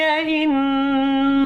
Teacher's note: نون مشدد پر غنہ کرنا ہے